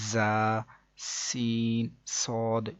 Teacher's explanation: ان 3 حروف یعنی کہ زا، سین، صاد کو ادا کرتے وقت سیٹی کی طرح کی آواز نکلتی ہے، اس لیے ان حروف کو حروف صفیریہ یعنی سیٹی والے حروف بھی کہتے ہیں، جیسے کہ زا، سین، صاد۔